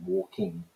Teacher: the middle classes are almost entirely using the velar nasal sound by saying walking